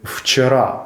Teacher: у російській мові в вимовляється як англійський звук ві ближче до ф щоб правильно вимовити вчера ворожою мовою ледь помітно прикусіть нижню губу